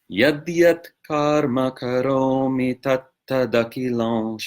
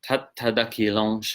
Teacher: the anuswara in akilam at the end of the word akilam is realized as a pure nasal before the following sibilant shot in shambo